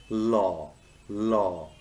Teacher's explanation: The law sound is called a lateral liquid and is formed by letting the air stream flow around the sides of the tongue